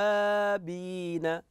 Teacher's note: لاحظ الواو المشدده ناتي بالشده فيها